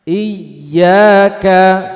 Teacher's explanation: Jangan memanjangkan i-nya tapi y-nya ada hentakan